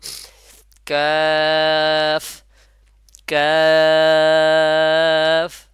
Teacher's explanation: কাফটা উচ্চারণ হবে শক্ত এবং উপরের যে শক্ত এবং নরম তালু আছে ওখানে লেগে জিহ্বার গোড়াটা ওখানে লেগে উচ্চারণ হবে